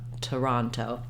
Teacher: This first O, because it's in an unstressed syllable, is going to be a vowel schwa, and it sounds like Toronto.